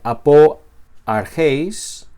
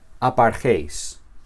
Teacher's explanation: De alguna manera el apóstrofe ocupa el lugar de la vocal no se pronuncia. Y estas palabras nuevamente se pronuncian juntas, porque la primera no tiene acento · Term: elisión